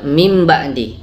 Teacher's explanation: iqlab adalah mengganti nun sukun menjadi mim